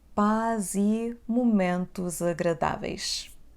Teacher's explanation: we have the sound Z in between two vowels